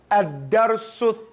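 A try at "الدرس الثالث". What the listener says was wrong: Stick your tongue out. It's not salis, it's thalith.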